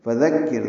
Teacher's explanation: فذکر، دال کو نرمی سے پڑھنا ہے، کاف سے ملانا ہے، را ساکن ہے